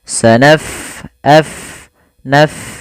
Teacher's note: Pada lafal bacaan sanafrugu, fa-nya kita alirkan nafasnya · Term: huruf fa